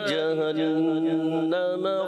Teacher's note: نون مشدد کا غنہ جہنم میں پورا کریں گے